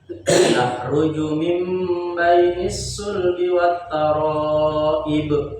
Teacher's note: Taro 5 harokat, wajib mutasil.